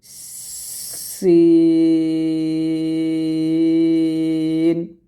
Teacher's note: সিন উচ্চারণ করার সময় এখানে সফিরও হবে হামস হবে মানে একটা বাতাসও বের হবে এবং একটা আওয়াজ বের হবে দুটো একসাথে বের করেই আপনারা সিনটা উচ্চারণ করবেন এরকম ভাবে সিন